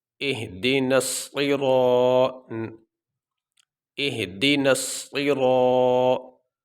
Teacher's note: صاد زیر صی، آگے یہ را کے اوپر زبر ہے اور را کے بعد الف ہے، الف ساکن سے پہلے زبر آ گئی، جس کی وجہ سے یہ حروف مدہ کہلایا اور حروف مدہ کو لمبا کیا جائے گا